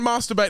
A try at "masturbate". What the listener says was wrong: We don't use a hard A in the Australian